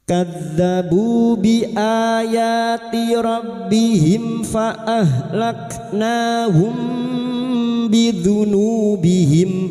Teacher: Mim sukun bertemu fa idhar syafawi. Mim sukun dibaca jelas tanpa mendengung.